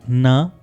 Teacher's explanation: इन दोनों साउंड्स में भी टिप ऑफ द टंग आपके एल्वियोलर रिज को टच करेगी